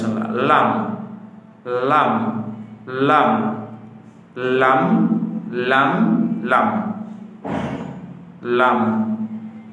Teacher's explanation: জিহবার আগার কিনারা সামনের উপরে দাঁতের মাড়ির সঙ্গে লাগাইয়া